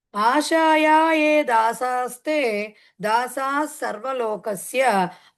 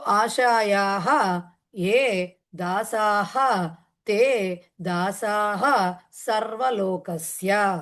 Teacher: ఆశాయాహ అక్కడ విసర్గతో వస్తుంది, అది సంధి జరిగి లోపం జరుగుతూ ఉంటుంది దానికి